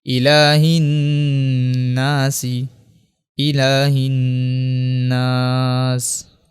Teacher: چونکہ نون کے اوپر جو ہے وہ تشدید ہے اس لیے یہاں پہ غنہ کریں گے